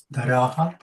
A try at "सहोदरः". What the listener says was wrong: Sahodaraha. If you do like that means there is some more coming. I said end it means Sahodaraha. Drop the tune. In that way I meant, not with the pronunciation I meant.